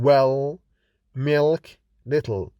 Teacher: we find the dark l mostly in final position of the word · The dark L is voiced velar lateral, that is, the place changes from alveolar to velar, which is in the back of the mouth